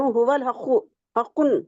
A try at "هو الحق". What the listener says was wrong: حق نہیں ہے، هو الحق، ایک ہی بار حق، دو بار حق حق۔